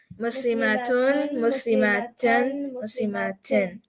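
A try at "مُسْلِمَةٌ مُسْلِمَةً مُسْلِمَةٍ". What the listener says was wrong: The ma part is still too long. I don't like it. Muslimatun, muslimatan, muslimatin. Yours is muslimatun, muslimatan. The ma is too long. It's got to be super short. Muslimatun, muslimatan, muslimatin.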